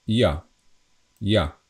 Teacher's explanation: we don't pronounce this J as J, like in English, but we always pronounce it as Y.